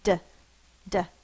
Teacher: my tongue is up tapping the top of my mouth